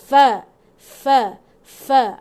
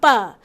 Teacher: Gigi atas dia akan parking dekat bibir bawah. Fa. Ada betul, ada angin lepas.